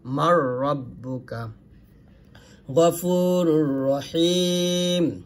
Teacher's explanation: তাহলে কিন্তু কি করতে হবে গুণনা ছাড়া পড়তে হবে মানে মিলাবে এখানে এই মিমকে রকে ধরবে নুনটা পড়া যাবে না মিলাবে এখানে গুণনা হবে না